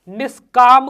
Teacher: विसर्ग का मूर्धन्य में परिवर्तन